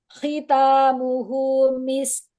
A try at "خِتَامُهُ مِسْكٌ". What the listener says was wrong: Belum kedengar. Didorong ke depan. Misk. Misk. Misk. Didorong nafasnya ke depan. Didorong. Misk. Belum. Enggak, iya, enggak kedengeran. Didorong ke depan. Jadi direnggangkan mahrotnya. Mahrot huruf kafnya renggangkan.